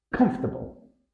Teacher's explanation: native speakers typically compress the word into three syllables with the stress on the first syllable